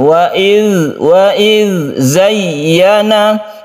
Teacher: zayyana ada tasydid ya yang kita tekan ke ya-nya sehingga terasa sekali penekanannya itu.